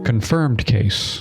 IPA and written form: kənˈfɚmd ˈkeɪs (confirmed case)